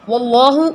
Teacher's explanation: اللہ کا نام ہیوی ہے، پر ہے، آپ کو پتہ ہے کیونکہ زبر ہے